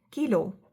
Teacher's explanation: Ka has a similar sound as in English word kite but it is less aspirated.